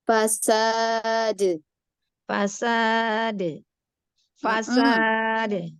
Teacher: jangan diakhiri qalqalahnya dengan hamzah